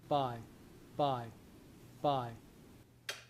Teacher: my lips are opening and then my vocal cords get busy right away. You can see there isn't a big gap right in between the the P and the and what's happening after it. · So this is an unaspirated voiceless stop. Yeah. So my lips are opening, and then my vocal cords get busy right away.